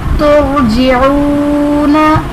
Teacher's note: तुरजिऊना, रॉ साकिन से पहले हर्फ पर पेश है तो रॉ को पुर पढ़ेंगे। · वाव साकिन है, उससे पहले पेश है तो वाव मद्दा का कायदा बनेगा, इसलिए इसे एक अलिफ यानी 2 हरकत के बराबर खींच कर पढ़ेंगे